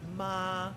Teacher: The first tone is a midflat level tone